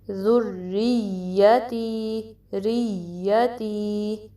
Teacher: پھر را کو یا سے ملانا ہے اور یا پہ ہم آواز ریز کریں گے کیونکہ تشدید ہے، تو ادھر ہم ٹائم دیں گے